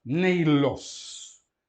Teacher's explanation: Ditongo ei é longo, não é? E coloca-se o acento no segundo elemento do ditongo. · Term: acento circunflexo